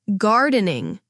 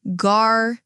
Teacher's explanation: The stress is on gar. >> The r sounds like the r in car.